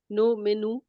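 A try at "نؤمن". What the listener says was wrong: sister इसको आप जो है नो मेनू के बजाय नु मेनू क्या है, ठीक है वो भी है ना आगे, नु मेनू, हाँ देश का जो हमने बोल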